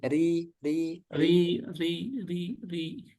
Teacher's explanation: kalau kasrah ro ini tipis ya